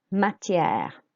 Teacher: The accents I want you to concentrate on are matière and your voice going down